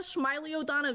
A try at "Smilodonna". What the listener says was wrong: There's no extra I. It's Smilo. There's no extra I after the L. It's just SMILO.